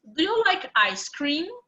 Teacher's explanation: So for example, in the question, do you like ice cream? Normally, the intonation is up. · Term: intonation for questions